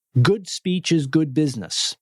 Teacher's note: every word has about the same stress and same volume and same meaning